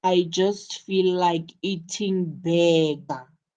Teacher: In your statement, the emphasis is on burger because burger is the important information of your context.